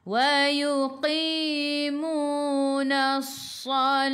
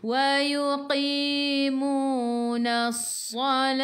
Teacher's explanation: Ta marbutah bila berhenti jadi ha. Dia bertukar.